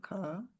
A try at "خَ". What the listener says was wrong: نہیں، خا زبر خا، پھر بعد میں بھی خا ہی کہیں گے، کھا نہیں پھر کہیں گے.